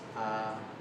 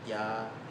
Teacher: the a and ya are basically almost the same vowel, except for the fact that there's a y sound on the second one